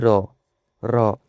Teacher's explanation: ଆପଣଙ୍କ ଜିଭର ଅଗ୍ରଭାଗଟା ତାଳୁ ନିକଟରେ ବହୁତ କ'ଣ କମ୍ପିତ ହୁଏ। ସେଥିପାଇଁ ରକୁ ହିଁ କମ୍ପିତ ବର୍ଣ୍ଣ ବା ଲୁଣ୍ଠିତ ବର୍ଣ୍ଣ ବୋଲି କୁହାଯାଇଥାଏ।